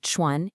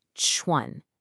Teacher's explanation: You should literally feel a puff of air if you put your hand in front of your mouth. · For chuan, a lot of learners forget to aspirate, to push out air. It's not chuan, it's chuan.